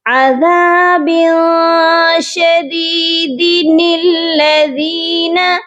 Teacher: دال کے نیچے ہم ایک زیر کو پڑھیں گے اور نون قطنی کو لام کے ساتھ ملائیں گے. نون قطنی جو ہے زیر کے ساتھ ملا کر پڑھا جائے گا.